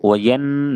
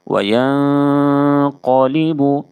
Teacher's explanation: نون کی آواز کو ناک میں چھپا کر غنہ اور اخفا کے ساتھ پڑھیں گے، اس کو اخفاء حقیقی کہتے ہیں۔